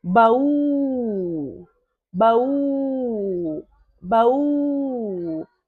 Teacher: U é a sílaba tônica.